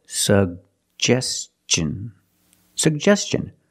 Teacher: Put the stress on the second syllable.